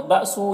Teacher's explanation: حمزہ ساکنہ جھٹکا لگے گا۔ ہو میں واو مدہ الٹا پیش ہے، یہ واو مدہ کی طرح ہوتا ہے، ایک الف کے برابر کھینچیں گے۔